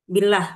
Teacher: Karena lafaz Allah apabila sebelumnya hurufnya berharakat kasrah maka dibaca taf tarqi tipis ya. Billah itu artinya tipis. Jadi lidahnya ee terhampar ya.